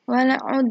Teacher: Selanjutnya ada qalqalah sugro. Dal berharokat sukun dibaca memantul secara ringan.